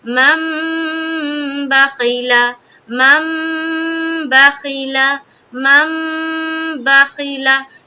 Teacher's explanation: غنہ کہتے ہیں تھوڑی دیر ناک میں آواز کا روکنا، غنہ کہلاتی۔ تو یہاں پر ہم جب پڑھیں گے تو ہم تھوڑی دیر آواز کو بھی روکیں گے اور چھپائیں گے۔ · جب ہم میم کو میم سے ملاتے ہوئے اپنی آواز کو روکیں گے · غنہ کی مقدار کیا ہے، ایک الف کی بقدر ہے۔ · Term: غنہ اور اخفا